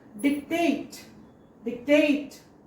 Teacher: Word stress is on second one. Dic-tate. Dic-tate. Tate is more stressed.